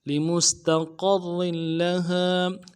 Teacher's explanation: لمستقر میں لام کو نرمی سے پڑھیں گے، میم کو سین کے ساتھ ملانا ہے، سین کی سیٹی کو آواز جاری رہے گی، تا کو نرمی سے پڑھنا ہے، قوف کو موٹا کرنا ہے، آگے را کے ساتھ ملانا ہے، تشدید زور دیں گے اور را کے تنوین کو آگے لام کے ساتھ ملانا ہے، تشدید یہاں پہ بھی زور دیں گے اور لام کے بعد ہا ہے، ہا کے بعد الف مدہ ہے، ایک الف دال میں کھینچیں گے.